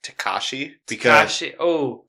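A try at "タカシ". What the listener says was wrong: Takashi. You gotta put the emphasis on the ka. Anyway, Takashi.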